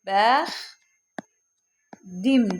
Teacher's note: Bəx dim deyə tələffüz olunacaq. Yəni t d-ya çevrildi.